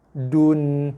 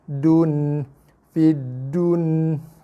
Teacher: Jumpa aja nun baris mati, confirm itu bukan bacaan nun dengung, tak dengung. So kita zahirkan ataupun izharkan bacaan nun, jelaskan bunyi bacaan nun tu.